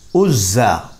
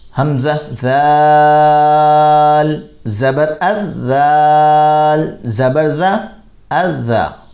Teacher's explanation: زا میں ہم سٹی ظاہر کرتے ہیں, ز اس کی آواز نکلتی ہے, ساؤنڈ ہوتا ہے, جبکہ ذال کے اندر یہ ساؤنڈ نہیں ظاہر کرنا ہوتا